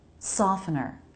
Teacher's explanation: in the word soften or softener, the T is silent.